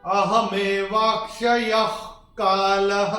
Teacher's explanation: विसर्ग के बाद अगर क या ख आता है तो विसर्ग का उच्चारण होता है ह फ्रॉम द एपिग्लॉटिस